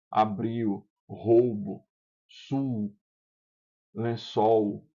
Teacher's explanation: na escrita tá escrita uma consoante, mas na hora de pronunciar a gente pronuncia uma semivogal · considerado L final como semivogal